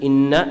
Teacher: The makhraj of ghunna, the sound which comes from the bridge of the nose, over here, right here.